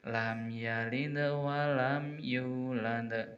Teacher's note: qalqalah kubro, besar, jelas, nampak sekali